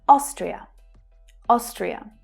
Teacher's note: The stress pattern puts the stress on the first syllable.